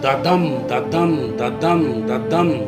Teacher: Each foot consists of 2 syllables, one unstressed and the other stressed. The unstressed syllable is followed by the stressed one. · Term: iambic tetrameter